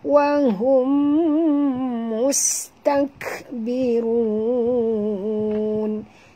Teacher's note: mim mati bertemu mim. Idgham mislain. Sekali lagi, ya, dengung. Dua harakat. Wahum mus. Bunyikan safir pada sin.